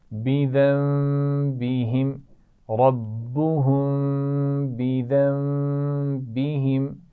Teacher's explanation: ربہم کی میم پر بھی غنہ ہے، ذنبہم کی بھی یہاں پر بھی نون ساکن کے بعد با ہے، تو میم سے بدلیں گے اور غنہ بھی کریں گے